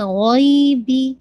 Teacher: غوئین کو آپ نے 2 کاؤنٹ پڑھنا ہے، یہ آپ کا یا لین ہے